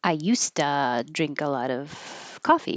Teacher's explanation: But the combination used to is going to sound like an S